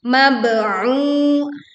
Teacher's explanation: kita pantulkan ba sukun dengan suara pantulan yang jelas